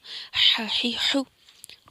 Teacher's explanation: آپ نے نا حا ویسے ہی ادا کرنا ہے جیسے ٹھنڈی ہوا کی شور کی طرح